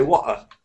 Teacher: The word water, they don't say the T or the R. They just say water.